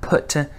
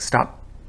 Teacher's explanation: It's the aspirated P versus the unaspirated P. · But if you say the word stop, the way we normally do in conversation, like stop, then there's no aspiration. It's still a P, but it's an unaspirated P.